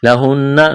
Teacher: نون مشدد ہے, آواز ناک میں چھپائیں گے.